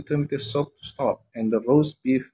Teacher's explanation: tomato soup, roast beef, mashed potato, and peas are stressed. Ini kata-kata yang biasanya ditekan because the food order is important information here.